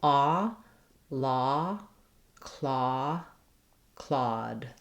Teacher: the aw stays open and shouldn't move and shouldn't slide · Thinking about the aw shape, my mouth is very open. It's as open, almost as open as it is for the ah of father, but I have a little bit of lip rounding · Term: aw vowel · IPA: /ɔ/